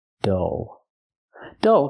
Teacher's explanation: it's closed and relaxed uh uh uh du dull dull so the short uh sound like cup and up plus the dark L